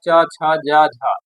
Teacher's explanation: ये जो तालु है तालु का आवाज च छ ज झ ये तालु से निकलता है।